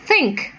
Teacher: your tongue coming very near the upper front teeth but not quite touching it